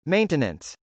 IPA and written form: mˈeɪntənəns (maintenance)